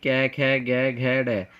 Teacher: इसका पहला भाग होता है क वर्ग, जिसमें कि कै, ख, ग, घ, ड, जो इनका उच्चारण स्थान होता है वो होता है कंठ